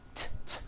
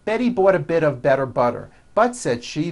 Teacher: If I put it in my batter, it'll make my batter bitter. Again, notice that you do not hear any T sounds. T, t. They're only D's, d, d, which are voiced.